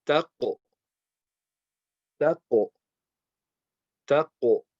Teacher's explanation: this letter is heavy and we are going to apply qalqala on the qaf. So again, you're just going to bounce the sound.